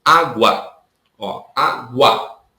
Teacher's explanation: O A é muito mais forte que o U. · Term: ditongo crescente